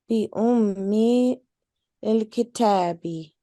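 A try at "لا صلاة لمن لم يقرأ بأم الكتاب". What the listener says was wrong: Remember, we were practicing that with the names of Allah, joining the ummil.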